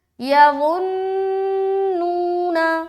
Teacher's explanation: یظنون، پہلے تو لا کو نون سے ملاتے ہوئے نون کے اوپر رکیں گے جو کہ ہے نون مشدد کا غنہ کرنا. اس کے بعد نون کو واو سے ملاتے ہوئے ایک الف کھینچیں گے جو کہ ہے واو مدہ کا قاعدہ. اس کے بعد نون کو الگ سے پڑھیں گے.